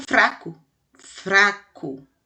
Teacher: O R que está entre o F e o A, a gente treme a boca para falar. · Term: som fraco